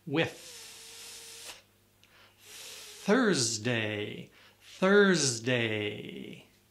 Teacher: the second TH is with air, but there's still the tongue pressed up against the teeth with pressure.